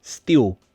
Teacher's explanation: We often change the L sound to a W sound.